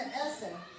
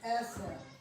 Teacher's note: You hardly hear the R at the end at all, because it's rolled, and so it kind of rolls off. Eser. It's kind of in the back there.